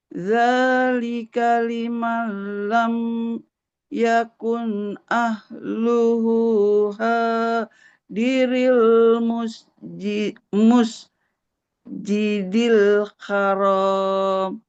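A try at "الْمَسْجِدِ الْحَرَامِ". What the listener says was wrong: Oke, garis di atas miring fathah, bukan musjidil. Kan Masjidil Haram, enggak Masjidil Haram.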